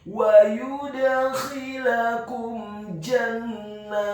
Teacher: Kemudian kata jannat, huruf jimnya dibaca tafkhim, tebal, fathah 1 harokat. Huruf nunnya ditasydidkan dengan gunnah atau dengung seperti mat atau panjang 2 harokat. Setelah huruf nunnya ditasydidkan, kemudian fathah 2 harokat karena harokatnya tegak. · huruf ta-nya dibaca sukun dan ada hamasnya